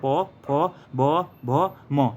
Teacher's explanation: और प वर्ग में प फ ब भ म, इसका उच्चारण आपका ओष्ठ से होता है